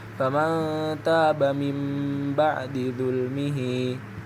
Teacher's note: Karena nun mati bertemu dengan huruf ba, maka nun sukun diganti menjadi mim sukun dan dibaca dengung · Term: iqlab